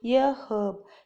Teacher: In most American accent, the H in herb is silent, so American says an herb. In many British accent, the H in herb is pronounced